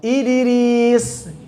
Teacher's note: Misal, harakat sebelumnya kasrah. Idris, maka suara qalqalah mendekat ke kasrah